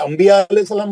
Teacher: نون ساکن کے بعد با ہے, میم سے پڑھتے ہیں